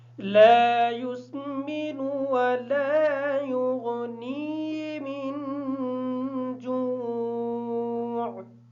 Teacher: لا یسمن کا جو لام ہے اس کے بعد الف مدہ ہے اس وجہ سے اس لام کو تھوڑا سا لمبا کر کے پڑھیں گے.